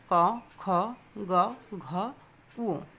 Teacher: ক বর্গীয় বর্ণের উচ্চারণ স্থান হচ্ছে কণ্ঠমূল বা কণ্ঠ